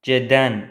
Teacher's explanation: Baxın, ə-yə görə t d-ya keçdi.